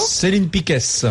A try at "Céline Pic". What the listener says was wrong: ne prononce pas le S.